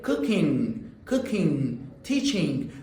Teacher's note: Final g should not be pronounced. · This is a nasal sound. You should not clearly pronounce g.